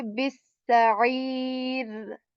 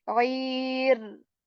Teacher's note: So here raw will be kept light, and we will say bisa'ir.